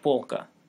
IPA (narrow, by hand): ˈpɔɫkə